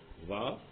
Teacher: वा में क्या, नीचे वाला ओष्ठ और ऊपर वाला दांत, ये जो मिलकर के जो है वा बोल रहा है।